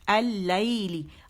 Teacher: لام باریک ہے، مشدد نظر آ رہی ہے، پہلا ساکن اور دوسرا متحرک · لام جو ہے وہ شمسی حرف ہے، تو وہ کیا کرتا ہے کہ اپنے اندر لام تعریف کو مدغم کر دیتا ہے، ٹھیک ہے، یعنی ادغام ہو جاتا ہے اس کا لام شمسی میں، تو پھر کیا ہوتا ہے لام مشدد ہو جاتا ہے، اسے ہم جماؤ سے پڑھتے ہیں.